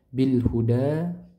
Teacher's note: Bil huda panjang 2 harakat, alif kecil sebelumnya fathah.